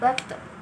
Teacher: Huruf ini keluar dengan menyentuhkan ujung lisan dengan tempat tumbuhnya dua gigi seri bagian atas dan diucapkan dengan suara menebal. Ketika melafalkan to dalam keadaan mati, suaranya terdengar memantul.